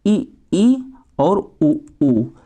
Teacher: जो संवृत होता है उसमें मुख दोस्तों बंद हो जाता है